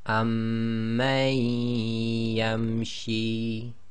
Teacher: So this will become amman yamshi. So effectively you drop the noon sakin sound and join the ma to the ya, as if ya's got a shadda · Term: idgham